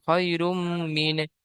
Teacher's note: ইয়া সাকিনের ডান দিকে যাওয়ার এসছে, ইয়ালিন হবে, ইয়ালিনকে নরম আওয়াজে তাড়াতাড়ি পড়তে হবে, টান দেওয়া নিষেধ।